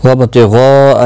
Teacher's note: مد متصل ہے 4 الف کی مقدار کے برابر کھینچ کر پڑھیں گے